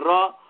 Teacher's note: र आप बोलेंगे तो दांत का मूल जो है वहां से वो बोला जा रहा है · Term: दंत मूलीय वर्ण